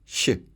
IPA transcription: ɕ